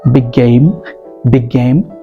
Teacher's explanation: just imagine that there's only one G and you have to put a little bit of pressure on that g so you have to say big game big game